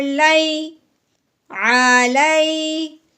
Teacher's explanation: یا ساکن سے پہلے جب بھی زبر آتی ہے اس کو لین ہی کہتے ہیں. اب ہم نے اس کو نرمی سے پڑھنا ہے، کھینچ کے نہیں پڑھنا